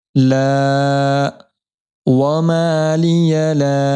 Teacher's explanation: یہاں پر حرف مد کے بعد ہمزہ دوسرے کلمے میں مد منفصل ہونے کی وجہ سے یہاں پر الف مدہ کو 3 الف کی مقدار کھینچیں گے